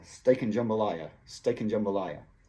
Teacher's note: Essa and quase desaparece, mas ainda tem som de N.